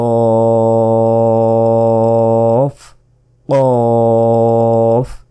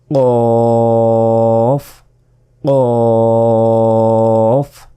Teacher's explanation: জিহ্বার গোড়া তার বরাবর উপরের তালুর সাথে লাগিয়ে কফ